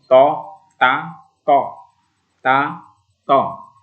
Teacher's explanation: Tadi kalau ada huruf ta tipis, sekarang ada huruf to. Agak bulat juga mulut kita ini kalau mengucapkan to ya